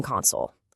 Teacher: You've got a gaming console, where the emphasis is on that first syllable. But then you try to console a friend and the emphasis shifts to the end.